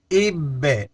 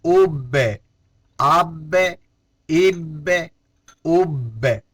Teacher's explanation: حمزہ با زیر اب، با میں قلقلہ ہے اس لیے میں آواز دوبارہ لوٹا رہا ہوں